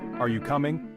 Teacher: For example, in a question like, "Are you coming?" Notice how the tone rises at the end. This rising intonation signals a question. Now try saying it with a flat tone.